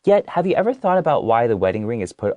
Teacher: some people might choose to make it go up at the end to make it sound like a question. They would go, yet, have you ever thought about why the wedding ring is put on the left ring finger?